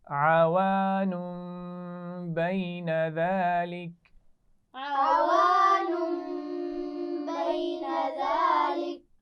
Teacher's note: نون ساکن پر تنوین ہے اور اس کے بعد با ہے تو میم سے بدل کر غنہ کرتے ہوئے پڑھا جائے گا